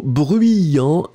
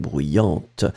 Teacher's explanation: you will pronounce this T in the end for the feminine